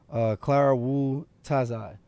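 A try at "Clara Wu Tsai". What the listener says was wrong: I would say Clara Wu Sai. I don't think you pronounce the T.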